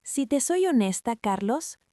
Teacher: Has hecho una pequeña pausa después de la honesta, has bajado un poco el tono y has mirado a los ojos. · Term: la entonación